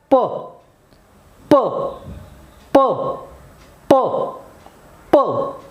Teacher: air comes without vibrating the vocal cord it comes into the mouth and when it comes into the mouth how the tongue plays · lands without vibrating the vocal cord it comes into the mouth upper lip and lower lip close tightly there is no comma there is not a single gap